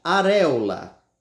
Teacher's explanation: não começa com tanta intensidade mais no meio dela vem a sílaba mais forte